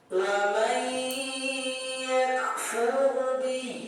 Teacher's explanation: bunyi nun dibawakan ke huruf ya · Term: idgham bi ghunnah